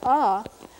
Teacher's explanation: This happens to be the same as the IPA symbol for that back sort of roundy ah vowel, which is pretty much the Ponca vowel when it's not nasal